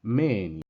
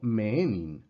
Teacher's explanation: Si nos fijamos, Menin tiene acento sobre la eta, que ustedes ven que es una, ya lo saben, es una vocal larga, y tiene ese acento circunflejo encima, indicándonos que de las dos E que son la eta, la primera parte es la que está acentuada